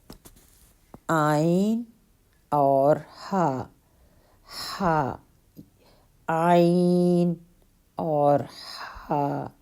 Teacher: یہ حمزہ اور ہا حلق کے نیچے والے حصے سے ادا ہوتے ہیں، اور عین اور ہا، ہا، عین اور ہا، یہ حلق کے درمیان والے حصے سے ادا ہوتے ہیں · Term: حروف حلقیہ